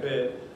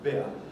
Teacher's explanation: the centering diphthongs are simplified into long monophthongs